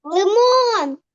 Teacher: на О молодець на другий склад Отже наголос рисочку ось таку наголос ми ставимо на звук О